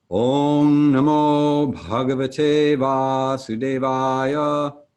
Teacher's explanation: The bars across the A's and the last word indicate a long elongated and open version of ah, as opposed to a short and truncated version of the other of the two a sounds when there's no bar.